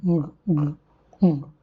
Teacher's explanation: k, g, ng are the velar sounds which are produced by back of the tongue and the soft palate.